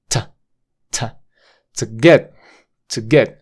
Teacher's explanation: haces una parada de consonante ahí en la t